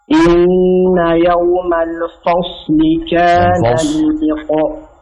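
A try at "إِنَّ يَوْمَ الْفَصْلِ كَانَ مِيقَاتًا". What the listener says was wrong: Ulangin, jangan fos, jangan fo, tapi fa. Buka dulu sedikit. Fa, fasli.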